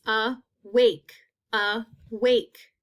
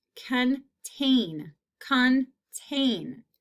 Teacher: i hear that long a in the second syllable